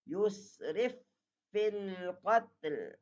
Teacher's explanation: Yusrif, tekan sikit sebab masuk yang sempurna, ada syaddah